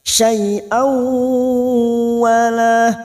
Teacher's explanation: Syai'au, fathah tanwin bertemu waw, idgham bi gunnah, nun sukun atau tanwin yang bertemu dengan 4 huruf ini masuk dan mendengung. Syai'au, memasukkan bunyi hamzah yang berharokat fathah tanwin pada huruf waw dan ditahan selama 2 atau 3 harokat